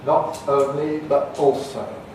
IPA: nɒʔ əʊnli bəʔ ɔːlsəʊ